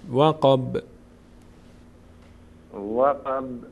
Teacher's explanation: ب رو سعی کنید یک مقداری در مخرج می‌لرزه